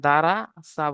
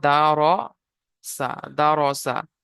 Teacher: র এর উপরে যাওয়ার এসছে, তাই র কে পুর করে পড়তে হবে। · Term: র পুর